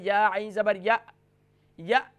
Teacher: یا کو جب عین سے جوائن کریں گے تو عین ہی کا ساؤنڈ پیدا ہونا چاہیے، حمزہ کا ساؤنڈ نہیں پیدا ہونا چاہیے، کیونکہ جب ہم یا عین زبر یا پڑھتے ہیں تو ہمارے یہاں ساؤنڈ پیدا ہوتا ہے یا عین زبر یا، تو حمزہ کا ساؤنڈ نہیں پیدا ہونا چاہیے، عین کا ساؤنڈ ہی یہاں ادا کرنا ہے۔